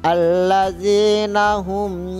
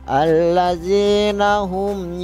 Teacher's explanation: Mim mati bertemu dengan huruf ya. Allazina hum dibaca jelas, tidak didengung juga. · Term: izhar safawi